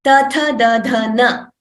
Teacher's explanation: And along with murdha, we use the nasal tone, nasika for na.